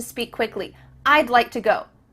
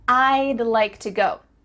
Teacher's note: we're cutting off all the sounds in the word wood except for that final D